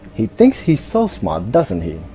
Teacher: such question tags with falling intonations can be used to gently persuade the listener and invite agreement